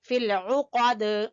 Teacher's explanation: قاف کو زبان کی جڑ سے